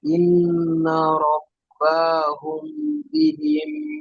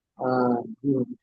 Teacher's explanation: মিম সাকিনকে এক আলিফ পরিমাণ গুণনা করে পড়তে হবে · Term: ইকফায়ে সাফাবি